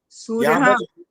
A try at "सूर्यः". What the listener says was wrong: सूर्य नहीं बोलना होता, सूर्य विसर्ग है यहाँ पर।